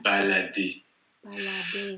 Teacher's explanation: on ne prononce pas en français le R à la fin des verbes